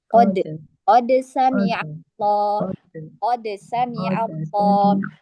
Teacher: Untuk penggorokan tidak usah dibuka-buka atau ditempelkan ke makhrajnya hamzah, itu tidak usah. Jadi qad di makhraj dal. Ujung lidah bertemu dengan pangkal gigi seri atas.